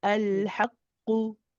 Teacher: Just be careful not to extend the haqqu. It's when you say qu, it's only one.